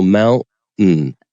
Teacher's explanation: in general American English right after that glottal stop you'll have an N